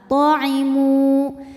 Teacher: Ketika berhenti di mu, hukumnya adalah mad tabi'i karena ada waw sukun didahului harokat dhammah, maka panjangnya cukup 2 harokat